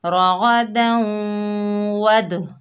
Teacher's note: double sound آئے گا دال کا حروف قلقلہ میں سے ہے